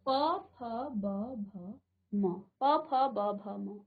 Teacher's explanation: जीभ आपकी अभी कहीं स्पर्श नहीं कर रही है, अभी आप अपने होठों से इनका उच्चारण कर रहे हैं, तो इसको कहा जाता है ओष्ठ।